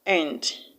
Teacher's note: The word end, A-N-D, belongs to the minor part of speech, conjunction, so it is not stressed. That's why the A in A-N-D is pronounced as a schwa sound, end, and not and.